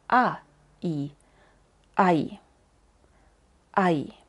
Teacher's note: se escribe con e i pero de hecho el sonido es a i